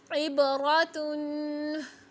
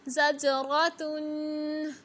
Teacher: रा पर ज़बर है तो रा को मोटा करना है